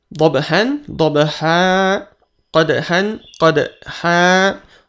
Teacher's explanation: Lalu bunyi an, fathah, fathatain, angka garis 2 ini ya, tanda baca atas 2, bertemu alif di akhir ayat atau saat kita memutus bacaan, dia juga berubah dari bunyi an menjadi a, a2 harokat, an menjadi a.